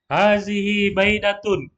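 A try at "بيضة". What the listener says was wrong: Bukan baida ya, bayudha.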